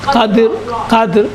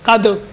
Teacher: دیکھیے بالقدر قدر. دیکھیے را ساکن ہے. وقف کی وجہ سے را ساکن ہوا ہے. دال بھی ساکن ہے. اس سے پہلے زبر ہے. قدر موٹا پڑھیں گے. آخر میں موٹائی تھوڑی سی واضح ہو.